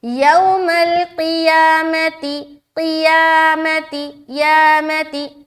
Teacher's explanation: यहाँ पर सिर्फ और सिर्फ या को लंबा कर रहे हैं, बाकी कोई भी हर्फ लंबा नहीं होगा